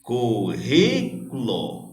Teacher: eu tenho a antepenúltima mais forte, que é ri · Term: proparoxítona